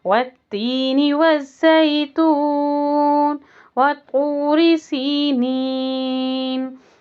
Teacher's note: آیت کمپلیٹ ہونے پر مد عارض للسکون ہوگا، 6 کاؤنٹ کر کے پڑھیں گے۔ طا کے لیے زبان پوری کی پوری اوپر جائے گی۔